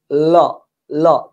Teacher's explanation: জিহ্বার দুই পার্শ্ব দিয়ে বের হয়ে যায়, জিহ্বার দুই পার্শ্ব দিয়ে মুখ থেকে বের হয়ে যায়। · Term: পার্শ্বিক ধ্বনি